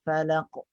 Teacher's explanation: Pantulannya kena tinggi juga berdasarkan sifat isti'la' yang ada pada huruf qaf.